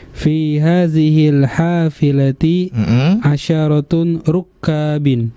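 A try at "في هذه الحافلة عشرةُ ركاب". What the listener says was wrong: Asyarat asyaratu apa asyaratun? Tadi saya kedengarannya asyaratun. Asyaratu ya. Kita lihat di sini mudhaf tidak bertanwin. Fi hadhil hafilati asyaratu rukabin. Ya. Asyaratu bukan asyaratun.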